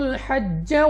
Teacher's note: اس کے بعد ہا اپنے مخرج سے ادا کریں گے۔ جیم ہمارے پاس قلقلہ مشدد ہے تو خوب جماؤ کے ساتھ ادا ہوگا